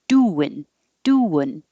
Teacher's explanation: So the first part of the verb is going to be the emphasized part, and then the ing changing to un is the shorter part.